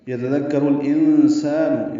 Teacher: انسان میں نون ساکن کے بعد سین آنے کی وجہ سے اخفا ہے